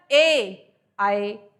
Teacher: ए आय जब बोलते हैं तो इसमें कंठ भी यूज होता है और तालू भी होता है